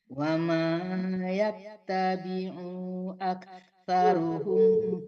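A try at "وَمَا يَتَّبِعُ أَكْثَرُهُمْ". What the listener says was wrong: Nggak panjang, jangan tertahan. Wa ma yattabi'u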